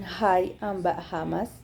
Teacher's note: notice how you are not actually constricting or blocking airflow for this h sound you are just excelling a little bit harder than you would